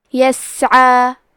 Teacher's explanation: عین کی ادائیگی حلق کے درمیان والے حصے سے ہے